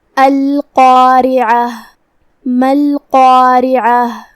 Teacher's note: را کے نیچے زیر ہے تو را کا حکم ہے ترقیق، مطلب ہم را کو ہلکی آواز میں پڑھیں گے · یہاں حرف العین ہے. عین کی ادائیگی حلق کے درمیان والے حصے سے ہے، ہم عین کو وہیں سے پڑھیں گے. · عین کی ادائیگی حلق کے درمیان والے حصے سے ہے، ہم عین کو وہیں سے پڑھیں گے. آخری میں یہاں تائے مدورہ ہے، ہم اس پہ روکیں گے تو ہا سے روکیں گے، مطلب ہم آخری میں ہاں پڑھیں گے.